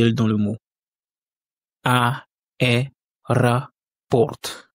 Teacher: Donc il y a une règle de prononciation risque qui dit que lorsque un O n'est pas accentué, il se prononce comme un A.